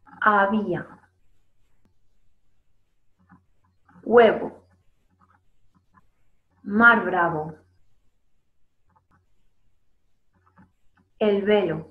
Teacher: los labios se aproximan, pero no se tocan como ocurría con la otra B · el aire pasa por el espacio que hay entre los dos labios y además las cuerdas vocales vibran